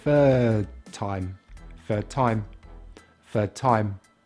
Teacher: Again, we drop the last consonant sound.